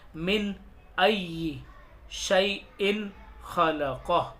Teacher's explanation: अब तनवीन कोई सी भी हो सकती है, 2 ज़बर भी, 2 ज़ेर भी, 2 पेश भी, या नून साकिन हो सकता है। तो उसको ज़ाहिर करके पढ़ेंगे, नाक में छिपा कर गुन्ना करके नहीं पढ़ेंगे। गुन्ना कहते हैं नाक में छुपाने को। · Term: इजहार